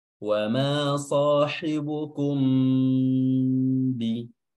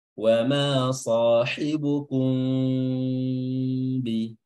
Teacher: Mimnya tidak dibaca izhar, mimnya tidak dibaca jelas, namun dibaca samar-samar. Kalau dibaca jelas bunyinya wa ma sahibukum bi. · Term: ikhfa syafawi